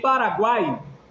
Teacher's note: em Paraguai, a semivogal vem antes e vem depois.